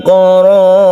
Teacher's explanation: maka ra-nya dibaca tebal atau tafkhim. Kemudian karena waqaf maka ini menjadi hukum mad arid lisukun.